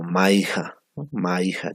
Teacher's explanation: el aire también escapa por las fosas nasales por la cavidad nasal